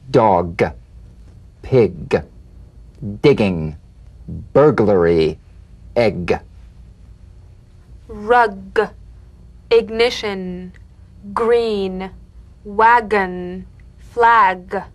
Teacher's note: pushing g g you'll feel a crisp tap and a voiced pulsation of the back of the tongue